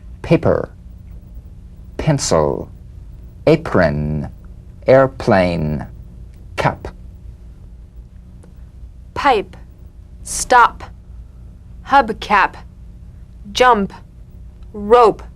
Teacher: the unvoiced labial stop consonant the whispered tap of this drum beat p is played with a light springing apart of the lips just